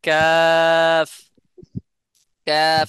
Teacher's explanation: একটু আগে বেড়ে জিহ্বার গোড়াকে নরম ও শক্ত তালুর সাথে লাগাইয়া কাফ উচ্চারণ হয়